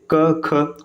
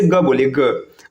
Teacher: आप बोल के देख लीजिए क ख, कोई कंपन नहीं। अब वहीं पे आप जैसे ग बोलिए ग, आप देखेंगे ना स्वर यंत्र में थोड़ा सा वाइब्रेशन हो रहा है।